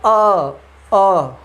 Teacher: हवा मेरे मुख से निकल रही है, नाक का इसमें कोई भी रोल प्ले नहीं कर रहा है